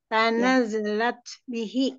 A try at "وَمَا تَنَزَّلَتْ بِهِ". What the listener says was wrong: Zalnya ada harokatnya. Tanazalat. Kayak huruf Z aja kalau gampangnya. Tanazza.